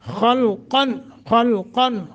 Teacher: خا اور قاف موٹے اور اظہار کر کے پڑھیں گے یعنی لمبا نہیں کریں گے خلقا آخر آخر رک جائیں تو